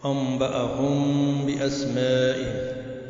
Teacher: تو میم ساکن کا اخفا مع الغنہ ہوا، جیسے انبأہم باسمائہم، تو میم ساکن کے بعد با آ گیا۔